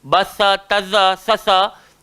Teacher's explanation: Empat huruf tu, batha, taza, sasa, kita kena gigit lidah.